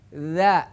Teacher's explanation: dza suaranya di ujung lidah menyentuh ke gigi seri atas